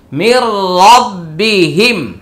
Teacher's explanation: এখানে নুন সাকিনের পরে র আসছে, এটা হচ্ছে ইদগামি বিলা গুন্না, এখানে গুন্না হবে না